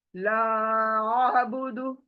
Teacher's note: الف زبر عین، اور عین کی آواز حلق میں آنی چاہیے